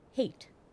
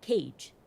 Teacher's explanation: the sharp T cuts off the vowel immediately but the soft G allows for more room